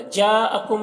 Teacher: مد متصل کو 3-4 الف کے برابر کھینچ کر پڑھتے ہیں۔